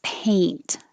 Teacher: you're starting in the middle e and going to e a so you should feel your tongue rising